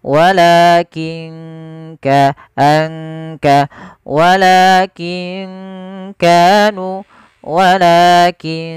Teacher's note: Kaf makhrajnya dari pangkal tenggorokan kita · ada nun sukun bertemu dengan huruf Kaf maka ini juga sama bacaan Ikhfa cara membacanya samarkan nunnya